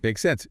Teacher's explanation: with a rising intonation at the end